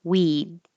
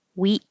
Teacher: because the D is voiced so the vowel will be a little longer